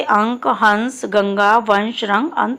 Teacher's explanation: अनुस्वार. इनके उच्चारण में हवा केवल नाक से निकलती है और इनका उच्चारण अधिक जोर से होता है.